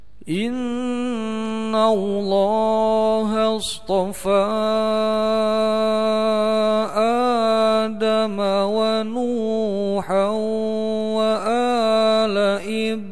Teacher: Ada tanwin bertemu wawu, maka harus dikasih tasdid sebagai bacaan dari idgham. Idgham bigunnah, mendengung panjangnya dua harokat.